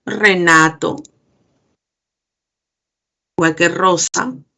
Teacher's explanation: está utilizándose la forma de una vibrante múltiple